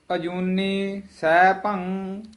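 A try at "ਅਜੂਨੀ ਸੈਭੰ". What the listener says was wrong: ਅਜੂਨੀ ਵੱਖਰਾ ਬੋਲਣਾ ਹੈ। ਕਈ ਅਜੂਨੀ ਸਹਿ ਬੋਲ ਜਾਂਦੇ ਹਨ, ਅਜੂਨੀ ਸਹਿ ਭੰ ਉਚਾਰਨ ਕਰ ਦਿੰਦੇ ਹਨ। ਅਜੂਨੀ ਵੱਖਰਾ ਬੋਲਣਾ ਹੈ, ਸਹਿ ਭੰਗ ਇਕੱਠਾ ਕਹਿਣਾ ਹੈ, ਸਹਿ ਭੰ ਨਹੀਂ ਕਹਿਣਾ ਹੈ, ਸਹਿ ਭੰ।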